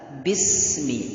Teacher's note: menipiskan huruf ba pada kalimat bismi. Jadi harus ditipiskan.